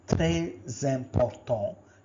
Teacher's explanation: Here notice there is a liaison. This S is pronounced as Z. Très important, because the vowel is followed by a vowel.